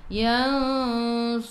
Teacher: Ra baris depan kena baca dengan tebal. Ni 2 harakat ada ya mad asli. · Su tebal. Huruf sad ni tebal. Sifat hurufnya itbaq. Kena baca tebal. Yansuruni. Ra baris depan kena baca dengan tebal.